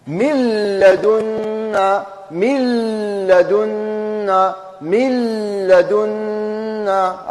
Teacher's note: إذا ميم، النون تدخل داخل اللام ونديروا تشديد. الغنة دخلت كلها، النون دخلت كلها داخل اللام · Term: إدغام بغير غنة